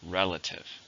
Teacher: three syllables stress on the first